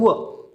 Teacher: कारण वचा उच्चार करत असताना दात आणि ओठ या दोघांचा उच्चार वापर करावा लागतो. दंत्य ओष्ठ वचा उच्चार करताना दाताला व ओठांना दोघांना स्पर्श होतो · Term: दंत्य ओष्ठ व्यंजन